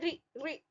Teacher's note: इसी तरह से री है, री जो है ह्रस्व है, री अग्र जीभ का अगला भाग, संवृत मतलब पूरा मुंह बंद रह रहा है, री। आवृत्तामुखी मीन्स होठ गोल नहीं रह रहे हैं, और मूर्धन्य, उच्चारण स्थान क्या हो गया?